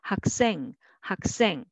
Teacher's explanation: because of the final consonant sounds, the next initial consonant sound will be tensified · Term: tense sound